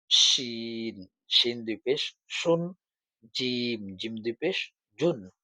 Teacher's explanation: জিম আর শিন একই জায়গা থেকে উচ্চারণ হয় জিহবার মধ্যখান থেকে